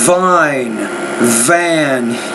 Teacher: Yeah, I think lesson 14, it's when the V's in the beginning of the word, vine, van. You need to pronounce that V with a little bit more vibration.